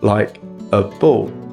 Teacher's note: So the indefinite article a becomes /ə/, like a ball. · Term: weak forms